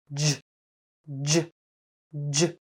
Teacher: Unlike ch, j is a voiced sound · Now, release the air by pulling your tongue back slightly from the alveolar ridge. Like ch, the most important part of this sound is completely stopping the air and then immediately releasing it. · Your lips should be slightly rounded and pushed forward a little as if you want to make the zh sound. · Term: j sound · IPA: /dʒ/